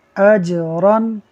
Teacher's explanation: جیم حروف قلقلہ میں سے ہے، اسے پڑھتے ہوئے خوب قلقلہ کریں گے، آواز لوٹتی ہوئی نکلے گی